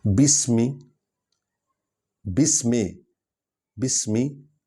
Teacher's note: بسمی، سین سیٹی کی آواز نکلے گی۔ بے حرف شفوی ہے، یہ ہونٹوں سے نکلے گا۔